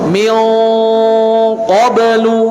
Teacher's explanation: Pangkal lidah bertemu dengan hanakul lahmi, langit-langit bagian lunak. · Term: qaf